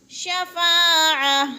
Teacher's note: الف خالی سے پہلے فا کے اوپر زبر ہے تو الف مدہ کھینچ کر، یعنی ایک حرکات کے برابر کھینچ کر پڑھیں گے